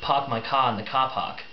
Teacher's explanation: there's not actually a single R in that · there is not actually a single R in that whole sentence, but a lot of ahs. However, what the Kiwis don't realize is that they secretly miss having the R sound in their sentences, so they slip it back in.